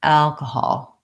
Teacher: So kahal are short. The vowel in the stressed syllable al is the vowel a, like in cat and black. And there's a man's name in American English, Al, and it sounds like that.